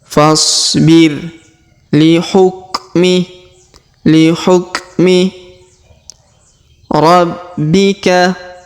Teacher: Perhatikan, fasbir, huruf fa langsung ke huruf so sukun, alifnya tidak dibaca.